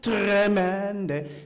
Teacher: See if you can get as much of a roll on that R as well. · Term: rolled R